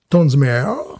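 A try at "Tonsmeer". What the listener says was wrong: Ouais, ça serait plutôt Mir, Tonsmer.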